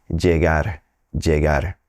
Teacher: you're likely to come across folks who are pronouncing it more like a soft J